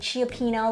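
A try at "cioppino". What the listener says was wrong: I think it's just Chapino. You had a couple extra syllables there, but okay.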